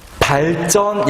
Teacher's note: 한자어 받침 리을 뒤에서 지읒은 된소리가 됐어